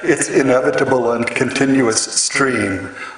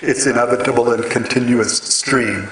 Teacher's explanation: it's a line which consists entirely of short syllables, except for the very last word